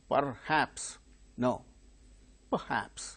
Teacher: R sound, when it is followed by a consonant sound, it is not pronounced. Here R is followed by H, so it is a consonant sound, therefore R is not uttered.